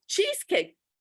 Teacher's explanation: he's not or she's not going to hear the final s in cheese which is a z and the k in cake she and everybody else who's ordering